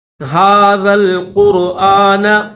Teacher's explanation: لو انزلنا هذا القرآن، ذال کو لام کے ساتھ ملائیں گے، ذال کے بعد دو الف ہیں، ان دونوں الف کو چھوڑ دو آپ، ڈائریکٹ ذال کو لام کے ساتھ ملائیں گے